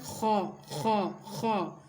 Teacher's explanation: ادنائے حلق سے منہ کی طرف والا جو حصہ ہے وہاں سے ادا ہوتا ہے